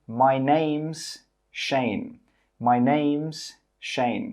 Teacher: you can join the name and the is together and say names